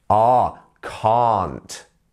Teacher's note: can't has the ah, it has the drawn out ah sound.